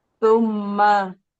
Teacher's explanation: Mim tasdid, gunnah musyaddadah, ditahan 3 harokat, dengung ke rongga hidung. Ditahan dengungnya 3 harokat di rongga hidung.